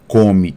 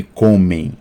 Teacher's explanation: a marca de plural é apenas a nasalização com a consequente de tongação né comem agora falou e falaram